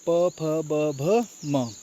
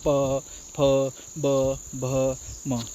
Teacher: जब हम इसका उच्चारण करते हैं तो हमारे जो दोनों ओंठ होते हैं वो आपस में एक दूसरे को स्पर्श करते हैं। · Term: प वर्ग